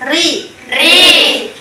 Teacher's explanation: Kalau dia berharakat kasro dia dibaca tipis. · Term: tarkik atau tipis